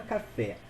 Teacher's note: a sílaba tônica é a última então olha só ela é uma oxítona que termine é oxítona terminada em é tá na regra acentua